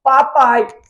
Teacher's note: Falei normal, é oral, é um ditongo oral.